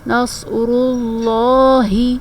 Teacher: ہا جو ہے وہ حلق کے سب سے نچلے حصے سے، جسے اقصی حلق کہتے ہیں، وہاں سے ادا ہوتا ہے